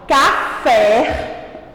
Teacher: quando a tia fala a palavra café o pé ele entrou com maior intensidade então a sílaba mais forte é o pé a última letra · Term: sílaba tônica